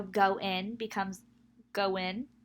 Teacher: Some examples of epenthesis include insertion of a glide, w, may seem to appear between two adjacent vowels due to co-articulation